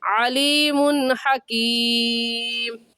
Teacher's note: تو اس تنوین پر غنہ نہیں کریں گے، جلدی سے پڑھ جائیں گے